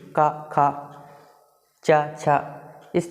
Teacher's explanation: इन वर्णों को बोलते समय हमारे मुह से हवा कम निकलती है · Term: अघोष